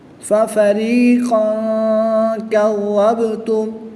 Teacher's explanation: با حروف قلقلہ میں سے ہے، جب حروف قلقلہ ساکن ہو تو ان میں قلقلہ خوب ظاہر ہوگا۔